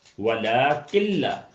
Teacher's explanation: نون کا وجود بالکل ختم ہو گیا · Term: ادغام کامل